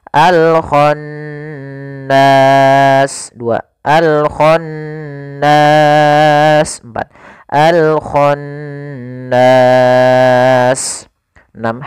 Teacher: Panjangnya untuk mad ada sukun, yaitu sepanjang 2, boleh 2 harokat, boleh 4 harokat, dan boleh pula 6 harokat. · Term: mad arid disukun